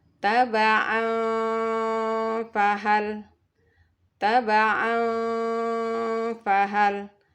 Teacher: Taba fahal ya jadi tanwinnya Ee kita samarkan masuk di Fa didengungkan dan ditahan selama dua harakat jadi lidah kita sudah bersiap-siap ke huruf Fa jadi t fahal ya Jadi bukan tabaang fahal ya karena mraj